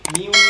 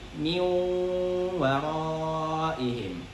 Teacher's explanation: Jadi ketika nun bertemu waw itu harus kita idghamkan dan digunnahkan. Ingat, gunnah 2 harokat. Dan huruf-huruf gunnah itu harus masuk ke hidung. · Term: idgham bi gunnah